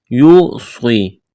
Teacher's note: یوصی، یا واو پیش یو، واو ساکن سے پہلے پیش ہے، واو مدہ ہے، الف کے برابر کھینچنا ہے، صاد کو موٹا کرنا ہے، سٹی کی آواز پیدا کرنی ہے۔ یا مدہ ہے، الف کے برابر کھینچنا ہے